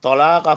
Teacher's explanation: وَإِنْ عَزَمُوا الطَّلَاقَ، طلاقہ کا توئے حرف نتیجہ ہے، اور زبان کی نوک اور اوپر کے دانتوں کی جڑ سے ادا ہوگا. طلاق فإن اللہ سمیع علیم، عین دونوں حلق سے پڑھے جائیں گے، عین پر تنوین پڑھی جائیں گی.